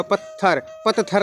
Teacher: इसी तरह से आप दूसरे उदाहरण भी देख सकते हैं, जैसे पत्थर मैंने लिख दिया, पत्थर, आधा तय और थ, दोनों मिलकर केवल थ की आवाज़ देते हैं और इसको डबल कर देते हैं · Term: गुच्छ व्यंजन